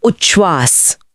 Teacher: कैसे? त बदलकर च बन जाता है और श बदलकर छ बन जाता है। दोनों मिलकर छ की एक नई मिलीजुली ध्वनि बनाते हैं, तो उत प्लस श्वास बन जाता है उच्छ्वास।